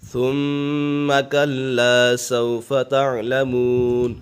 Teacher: میم مشدد ہے، اسے جماؤں کے ساتھ پڑھیں گے اور میم مشدد میں ہمیشہ غنہ ہوتا ہے